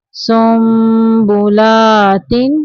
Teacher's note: نون کی آواز کو میم میں بدل کے پڑھیں گے، یعنی اقلاب کا معنی ہے تبدیل کر دینا یعنی بدل دینا۔